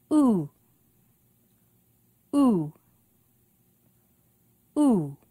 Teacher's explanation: oo is the high back vowel sound